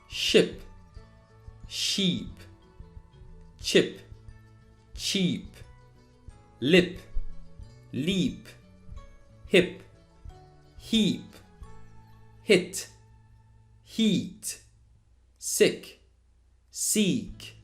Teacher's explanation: did you notice that the second column words take a bit longer to pronounce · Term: long vowels